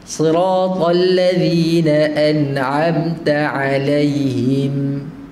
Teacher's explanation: mim hujung mati tu ada hidung